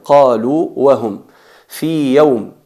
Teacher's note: No hay que fusionar la primera waw en la segunda, no hay que decir qalu wahum, eso sería un error.